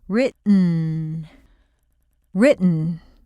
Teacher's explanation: you need a sharp upward sliding intonation up to the held T, then a quick drop for the N. Just go to the T position and hum. · If you have an N immediately after a T, you don't pop the T. The tongue is in the T position, but you release the air with the N, not the T. There's no T and no schwa.